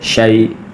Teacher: شین یا زبر شی، یا ساکن سے پہلے زبر ہے تو یا لین ہے، نرمی سے بغیر کھینچے پڑھیں گے